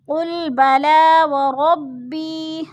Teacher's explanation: قل بلا وربی، ربی پہ یا مدہ ہے، یا ساکن سے پہلے با کے نیچے زیر ہے تو ادھر یا مدہ ہو رہا ہے۔ یا مدہ کو ایک الف دو حرکات کے برابر ہم نے لمبا کر کے پڑھنا ہے